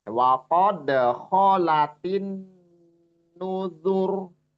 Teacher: nun itu ditahan dighunahkan ya di situ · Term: ghunah musaddadah